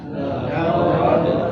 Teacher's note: Laqad khalaqnal insana fi kabad. Laqad dal sukun wajib dipantulkan di saat membunyikannya karena masuk pada hukum qalqalah